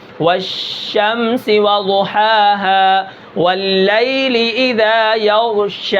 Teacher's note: شین کو جب ہم ادا کرتے ہیں تو منہ کے اندر آواز پھیل جاتی ہے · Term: تفشی